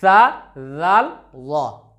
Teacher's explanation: जाल का मखरज क्या है कि जुबान की नोक और सनाया उलिया और सुफला का किनारा या सिरा कह लीजिए।